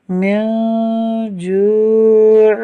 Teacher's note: میم، نون، زیر من، جیم واو پیش جو، من جو، عین دو زیر عن، من جوع۔ یہاں نون ساکن کے بعد جیم حروف اخفاء میں سے ہے، اس لیے اخفاء ہوگا، یعنی نون ساکن میں غنہ کریں گے۔